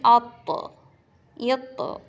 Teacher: حروف قلقلہ ہے تو آواز لوٹتی ہوئی آپ کو سنائی دے گی